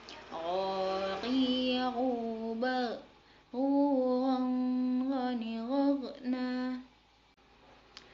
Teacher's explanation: o yang dikeluarkan dari tenggorokan yang terdekat dengan rongga mulut